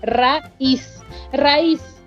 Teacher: Raíz, sí podemos silabearla, tiene 2 sílabas, pero se dan cuenta que la primera vocal se va con la primera sílaba y la segunda se va con la segunda sílaba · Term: hiato